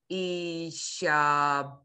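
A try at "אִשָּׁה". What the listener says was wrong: no, blend. Yeesh. I want to hear the yud. Yeesh. Yud.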